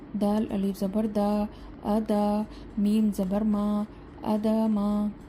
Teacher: ہم دال اور میم کو نہیں کھینچیں گے، ہم صرف حمزہ کو کھینچیں گے کیونکہ اس پر کھڑا زبر ہے